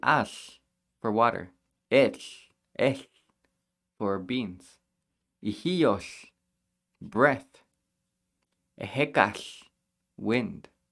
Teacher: We're breathing out like an H through the sides of our tongue, but while our tongue is shaped like an L.